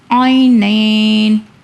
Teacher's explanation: نون یا نون زبر نین، عینین، یہاں پہ عینینی ہے مگر ہم وقف کر رہے ہیں تو نون کی سائن کو ہم نہیں پڑھ رہے